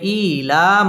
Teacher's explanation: হামজা খারাজের মধ্যে এক আলিফ টেনে পড়তে হবে